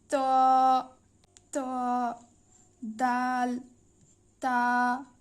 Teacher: জিহবার আগা সামনের উপরে দুই দাঁতের গোড়া সঙ্গে লাগিয়ে উচ্চারিত হয়। এটি শক্ত করে পড়তে হবে ছোট্ট করে।